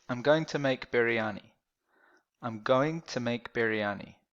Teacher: So this is not for spelling, this is only for how it sounds. When you say to, it sounds a bit shorter. It sounds like a t sound. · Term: soft t sound